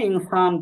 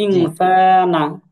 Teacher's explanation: এখন নুনে যদি কেউ অক্ফ করে তাহলে এটা হবে মাদ্দে আরজি, 3 আলিফ টান হবে।